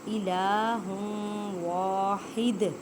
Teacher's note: واو حروف یرملون ادغام مع غنہ کریں